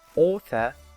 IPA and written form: ɔːθə (author)